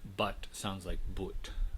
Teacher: in the north of england it's preserved with the original short u vowel